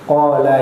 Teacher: Kalau saya rasa tidak ada menjadi persoalan karena jelas di situ panjangnya ialah hanya di huruf ko, hanya huruf ko, gitu. Qala yang panjangnya, ko-nya hanya 2 harakat